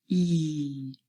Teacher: the tongue is quite high and our mouth is relatively closed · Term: long e